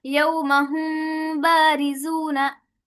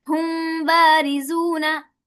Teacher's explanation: हुम को पूरा भी अदा नहीं किया और उसके अंदर गुन्ना भी कर दिया, नाक के बांस में भी आवाज को ले गए। इसे कहते हैं इख्फा शफ़ी।